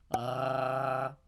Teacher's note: lo que estamos haciendo es hacer vibrar nuestra úvula en la parte trasera de nuestra lengua